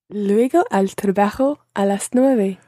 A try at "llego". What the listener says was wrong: Now watch, it's llego, double L there. Llego. And that's different from luego, which is in the phrase hasta luego. It's a different word. Hasta luego, luego. Okay, so it's a totally different sound, but it's very easy to confuse the two.